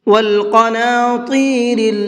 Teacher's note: اس کے اندر قاف اور طا دونوں کو پر کر کے پڑھیں گے